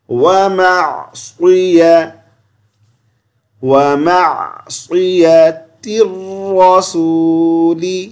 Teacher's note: صاد کو موٹی آواز سے پڑھیں گے، یعنی منہ بھر کے پڑھیں گے